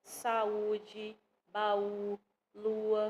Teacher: vogais que se encontram na mesma palavra mas elas não ficam juntas na mesma sílaba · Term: hiato